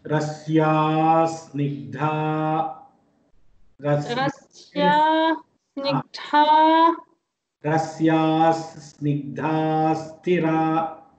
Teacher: that visarga, you have to pronounce it as half sakara.